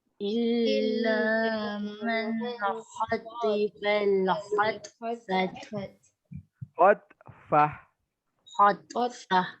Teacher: Kalau sekiranya kita berhenti jadi huruf ha. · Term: ta marbutah